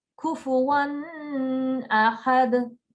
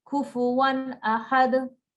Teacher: We don't want to give it gunna because it is read izhar. It's the letter of the throat, okay?